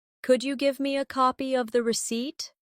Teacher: Could you becomes could ya in casual speech.